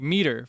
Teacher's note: Like in a word like meter, for example, you stress the first syllable. The second syllable like the tur and meter is unstressed. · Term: syllabic stress